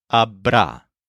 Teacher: This is similar to estará and será, with a stress on the syllable ra.